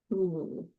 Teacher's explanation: It's the extreme corner vowel, produced both in English and Spanish. The body of the tongue is high in the mouth and pulled far back. The root is advanced, so pharynx is going to be open wide.